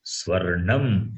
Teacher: So in swarnam, murdhanya nakara is there, not dental nakara.